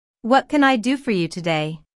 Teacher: this question starts with what so the intonation drops at the end of the question